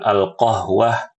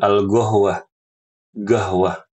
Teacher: huruf qof itu diganti dengan g ya